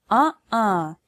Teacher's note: well the space between your vocal cords is called the glottis to make a glottal stop you close this space stopping the flow of air in your throat and not in your mouth